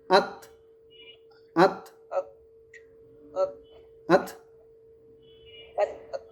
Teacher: বলে একটু বাতাস ছেড়ে দেই যদি উচ্চারণটা হবে আত আত আত লাস্টে একটু বাতাসটা ধরে না রেখে একটু ছেড়ে দিবেন